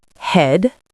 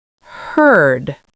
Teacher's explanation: So eh is quick and forward, and er is longer and more centered.